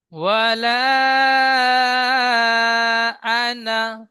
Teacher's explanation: তো নুন আলিফ জাবার নাটি টান হবে না, নুন জাবার না পড়বেন। নুন আলিফ জাবার না, আলিফের ডান দিকে জাবার থাকলে আলিফ মাদ্দা হয়।